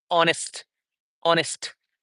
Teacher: then we have the honest honest where H is silent.